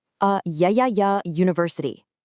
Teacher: it starts with a vowel letter, but your mouth makes a ya consonant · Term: y consonant